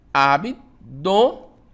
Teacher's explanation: Então aí eu tenho 3 sílabas. Abdômen, tá? Sílaba tônica, o dó, né? Abdômen, terminado em N.